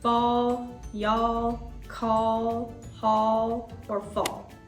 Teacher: In chunk all, that A is making the short ah sound like our O.